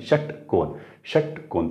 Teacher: तुम्ही पूर्ण उच्चार करा, षटकोन षटकोन, तर जिभेचा शेंडा दाताकडे येतच नाही.